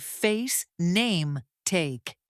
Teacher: Many learners make this vowel too flat. Americans start with a slightly open position and then glide the sound upward. · Feel how the sound shifts and lifts. Your tongue moves from a lower position to a higher one. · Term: long a sound, long A sound